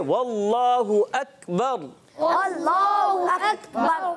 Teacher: रा साकिन, उससे पहले ज़बर आ गया तो रा पूर करके पढ़ेंगे